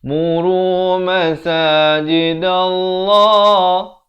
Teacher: Di sini lafaz jalalahnya dibaca tebal 2 harakat.